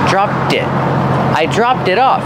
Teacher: link the T sound to the it